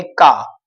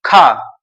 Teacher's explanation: तो आपके हाथ में फील कर रहे होंगे कि खा, हवा टच हो रही है, तो इसका मतलब ये हो गया आपका महाप्राण।